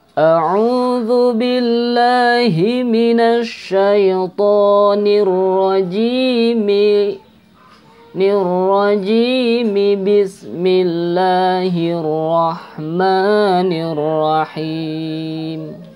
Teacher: Jadi menyambung isti'adzah, a'udzubillah dan basmalah disambung, bacanya satu nafas artinya. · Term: waslul isti'adzah wal basmalah